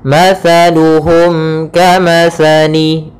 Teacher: huruf Kaf maka kita namakan dengan izhar syafawi izhar syafawi yaitu suara mimnya harus jelas dan tidak boleh ditahan